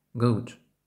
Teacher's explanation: при вимові англійського у губи практично не витягуються вперед однак вони округлюються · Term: звук у